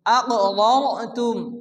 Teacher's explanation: রা সাকিনের ডান দিকে জবর রাকে পুরো মোটা করে উচ্চারণ করে পড়তে হবে